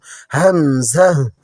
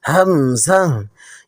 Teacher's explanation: উচ্চারণের সময় আওয়াজটা একটু স্পষ্ট এবং কিছুটা ঝটকা বা ধাক্কা লাগার মতো শোনায়। এটি সাধারণত আলিফের মতো একদম সোজা টেনে ছেড়ে দেওয়া নয়।